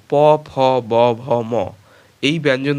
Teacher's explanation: ধ্বনিগুলি উচ্চারণের সময় ঠোঁট দুটি পরস্পরকে স্পর্শ করে এজন্য এগুলোকে অষ্ঠ ধ্বনি বা প বর্গীয় ধ্বনি বলা হয় এবার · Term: ওষ্ঠধ্বনি